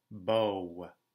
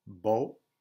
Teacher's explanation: Look at the difference between the French O and the English O. In English, it's a diphthong, so your mouth has two positions. In French, it's a pure vowel, so your mouth has one position. So, bo versus bow.